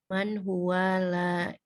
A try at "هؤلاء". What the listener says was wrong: Nah, bukan huwa, haulai. Haulai.